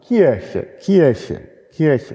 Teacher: Das ist irgendwie schwierig, das R an der Stelle zu sprechen, denn das R ist ein Vibrant und Vibrant am Ende einer Silbe vor einem weiteren Konsonanten, das ist nicht so passend. Also viele Deutsche sagen Kirche, Kirche, Kirche mit einem vokalisierten Vibranten. Das ist, wird dann zu so einem hinteren A. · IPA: [ˈcʰɪʀçə]